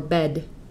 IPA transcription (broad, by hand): bɛd